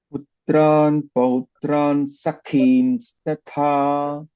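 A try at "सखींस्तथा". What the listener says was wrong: You are stressing sa also. Sakhim statha. First tha is alpa prana, second tha is mahaprana. While reciting, sakhim statha. You should not stress sa there, okay? Tha is mahaprana.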